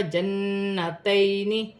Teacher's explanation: نون مشدد میں غنہ کیا جائے گا · یا ساکن سے پہلے زبر ہے تو یالین بنے گی، اسے کھینچا نہیں جائے گا